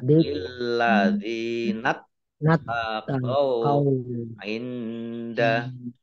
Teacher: Nun sukun bertemu dengan huruf dal, bacaan ikhfa, dibaca samar-samar.